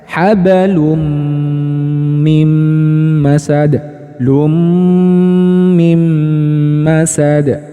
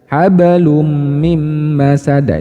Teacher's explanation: jadi dengung didengungkan kemudian panjangkan dengungannya jadi tidak hanya didengung dimasukkan saja tuh habalum mim masada itu